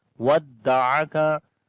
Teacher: Ain we read from the middle of the throat.